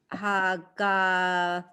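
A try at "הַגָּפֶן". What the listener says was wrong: Right, Hagafen.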